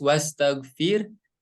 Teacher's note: jadi ketika membaca wastagfir ya huruf ro-nya berharakat Sukun dan dibaca tipis